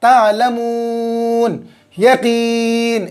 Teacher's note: یہاں مد عارض ہو رہا ہے ہر جگہ، یہاں پر بھی مد عارض کھینچیں گے، یہاں پر بھی مد عارض، حرف مد کے بعد والے حرف پر وقف کرنے کی وجہ سے جزم آ رہا ہے، 3 الف کے برابر کھینچیں گے